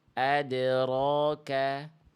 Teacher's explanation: Harusnya tidak dibaca ditahan bunyi pantulannya. Biarkan dia ringan terlempar saja. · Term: Qalqalah